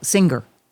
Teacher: Oh, that hard G. The hard G is a Chicago thing.